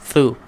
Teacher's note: Thu kena keluarkan hujung lidah kita di antara gigi kacip atas. Tekankan pada gigi kacip atas.